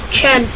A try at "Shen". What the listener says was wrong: It's not Chen, it's Shen.